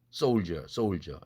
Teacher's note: 드 플러스 이도 G로 되는 것도 역시 한국어와 똑같습니다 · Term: 국외음화